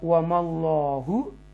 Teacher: अल्लाह के नाम से पहले ज़बर है तो उसको तफ़ख़ीम करके पढ़ेंगे, बोल्ड पढ़ेंगे